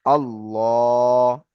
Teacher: আল্লাহ শব্দের আগে যদি জবার অথবা পেশ আসে তাহলে আল্লাহ শব্দের লামকে পুর পড়বো অর্থাৎ মুখ গোল করে পড়বো।